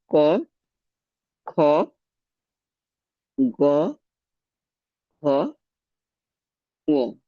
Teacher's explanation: অংশটাকে আমরা নরম তালু বলছি বা তোমার সফট প্যালেট বলছি তাহলে আলজিবের কাছাকাছি নরম তালু স্পর্শ করে এই জীবামূলীয় ব্যঞ্জন ধ্বনিগুলো উচ্চারিত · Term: জীবামূলীয় ধ্বনি, জিহ্বামূলীয় ধ্বনি